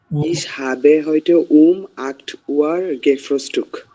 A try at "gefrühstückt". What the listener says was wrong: gefrühstückt. শেষে একটা টে থাকবে, gefrühstückt.